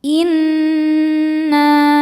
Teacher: Cara bacanya berdengung, tahan dengungannya kurang lebih 2 harokat. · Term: gunnah musyaddadah